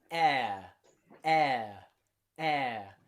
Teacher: we start with that air and we end with a schwa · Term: diphthong